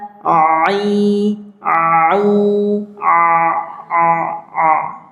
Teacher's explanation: Jadi kita membedakan mana Hamzah a i u mana ain ain itu bunyinya begini a a sebelum dikasih harakat fathah kasrah atau dommah aa a u a a a ya bunyinya keluar dari tengah tenggorokan a Nah, jadi terdengar seperti ada perubahan bunyi.